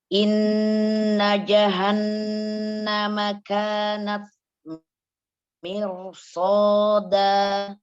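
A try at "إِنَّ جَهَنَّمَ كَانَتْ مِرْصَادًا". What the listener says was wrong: Umi jimnya masih tertahan. Innaja. Innaja. Iya, dibuka aja. Ja. Ja. jadi suara jimnya jangan terlalu kering.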